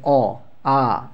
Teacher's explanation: দেখো অ আ, ঠিক আছে, উচ্চারণ করে কী হচ্ছে আমাদের কণ্ঠের থেকে কিন্তু উচ্চারণ হচ্ছে